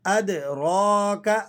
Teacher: اد، دال پر آپ نے قلقلہ ادا کرنا ہے. اد را کا، را پہ کھڑا زبر ہے تو آپ اس را کو موٹا کر کے پر کر کے ادا کریں گے